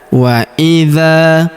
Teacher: huruf dza kita panjangkan dua harakat karena terdapat alif di depannya